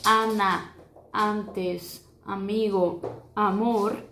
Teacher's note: a letra A, ela é um pouquinho mais aberta com relação ao português